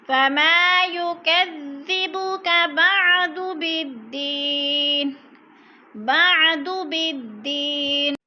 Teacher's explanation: بدی کی یا پہ یا مدہ ہے، یا ساکن سے پہلے دال کے نیچے زیر ہے تو یا مدہ کو بھی ایک الف کے برابر 2 حرکات کے برابر کھینچ کر پڑھنا ہے